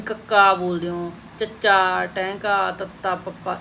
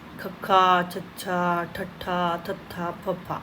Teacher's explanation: ਮਤਲਬ ਹਵਾ ਦੀ ਵੱਧ ਵਰਤੋਂ ਹੁੰਦੀ ਹੈ ਇਹਦੇ ਵਿੱਚ, ਤਾਂ ਕਰਕੇ ਇਹਨਾਂ ਨੂੰ ਮਹਾਪ੍ਰਾਣ ਧੁਨੀਆਂ ਕਿਹਾ ਜਾਂਦਾ